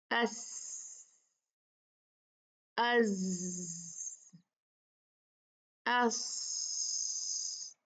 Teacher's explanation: इनको जब हम अदा करते हैं तो उससे हवा के साथ साथ सीटी की आवाज भी आती है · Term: हरूफ सफीरिया